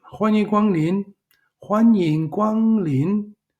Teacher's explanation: the first tone second tone first tone second tone